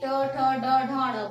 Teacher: ट, ठ, ड, ढ, ण बोल के देखिए, आपकी जुबान जो है ऊपर हो जाएगी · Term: तालु